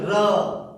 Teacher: र शुद्ध बोलिए र, तो जिह्वा ऊपर मुड़ रही है।